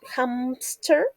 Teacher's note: In some accents, speakers insert a P sound between the M and S in hamster.